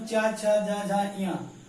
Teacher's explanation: ऐसे व्यंजन होते हैं जिनका उच्चारण दोस्तों हम लोग अपने तालु से करते हैं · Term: तालव्य व्यंजन